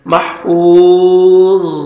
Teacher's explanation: زیر ضن محفوظ سٹاپ کریں گے آیت کمپلیٹ ہو رہی ہے لاسٹ لیٹر ساکن ہو جائے گا محفوظ ضا کو موٹا کر کے پڑھیں گے